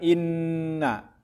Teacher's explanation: Inna jadi dengung. Ini gunah panjangnya 4 harakat. Harakat itu ketukan.